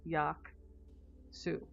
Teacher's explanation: because of the glide between two vowels, you have to put a Y noise in there